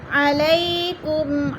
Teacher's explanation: یالین کو ہم نے لمبا بھی نہیں کرنا اور جھٹکا بھی نہیں دینا